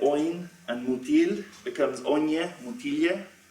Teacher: So you get palatalization inside the prosodic word, and so a word like oin and mutil becomes onye, mutilje, in the absolutive singular